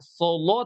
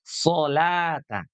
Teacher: lamnya tidak terpengaruh oleh huruf shad. Jadi dia tetap tipis. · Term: lamnya tipis